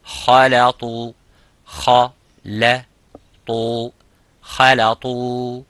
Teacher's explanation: kha is mufakham and lam is muraqqaq, which is empty mouth. The ta is full mouth.